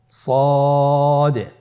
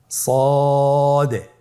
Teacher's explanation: সদ হরফের মাখরাজ কোন জায়গা থেকে উচ্চারিত হয় আপনারা স্ক্রিনে দেখতে পাচ্ছেন। জিহ্বার আগা, সামনের নিচের 2 দাঁতের পেট ও আগার সঙ্গে লাগিয়ে উচ্চারিত হয়। তাহলে আপনারা জিহ্বার আগা, সামনের নিচের 2 দাঁতের পেট ও আগার সঙ্গে লাগিয়ে উচ্চারণ করুন সদে।